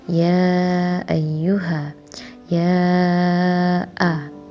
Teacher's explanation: Di situ ada mad tabi'i bertemu hamzah yang artinya yaitu mad jaiz munfasil. Sebab apa? Sebab mad tabi'i diikuti huruf hamzah dalam dua kata.